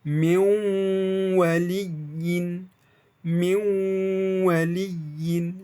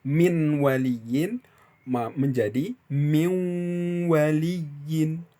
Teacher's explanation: Suara N-nya melebur atau mentasydid kepada huruf waw di depannya. Sehingga suara nun sukun tersebut wajib mengikuti arah makhraj huruf waw tersebut. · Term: idgham bigunnah